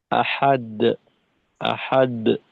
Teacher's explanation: কলকলাটাকে আর একটু শক্ত করা, যেহেতু এখানে মধ্যম কলকলা, কম না।